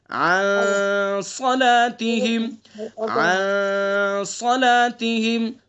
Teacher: اخفا ہوگا اس کے اندر، ایک الف کے برابر ناک کے نرم ہڈی سے ادا کریں گے